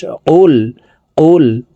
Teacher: কফের উচ্চারণ জিহ্বার গোড়া তার বরাবর উপরের তালুর সঙ্গে লাগাইয়া উচ্চারণ করতে হবে তো এই কফটি জমা লামকে ধরবে কফ লাম পেশ কুল কুল